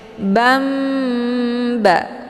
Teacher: Ini dinamakan dengan iqlab. Jadi cara bacanya tinggal nunnya dibalikkan ke dalam bunyi mim sukun. Jadi yang kita baca adalah bukan nun tapi mim sukunnya.